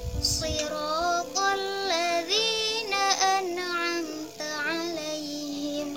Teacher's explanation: ro-nya itu mat tabi'i hanya cukup 2 harokat